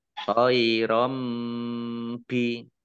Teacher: Fathah tanwin bertemu dengan huruf ba. Bacaan iklab. Dibaca membalik. Tanwinnya dibaca mim.